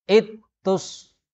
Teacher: Ittus, zalnya hilang diganti jadi ta. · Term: idgham